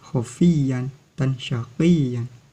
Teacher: Mad iwad terjadi apabila tanwin jatuh pada wakof atau pada kalimat dan dibaca mad sebagai ganti tanwin, sehingga suara tanwin hilang. Cara membacanya dengan panjang 2 harokat atau 1 alif.